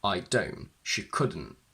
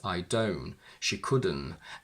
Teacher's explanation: when the contraction is on its own, we often use a glottal stop without the t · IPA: /ʔ/